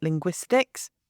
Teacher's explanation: the stress is on the second syllable, it's on the gwis